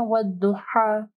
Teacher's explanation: ہا کو جو ہے گلے کے درمیانی حصے سے پڑھنا ہے